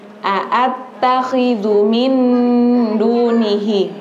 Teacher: Enggak boleh diseret. Kalau diseret jadi dengarnya kita memanjangkan dzunya padahal itu pendek.